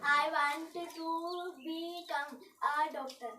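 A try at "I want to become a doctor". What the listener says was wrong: बी कम के बी ज़्यादा।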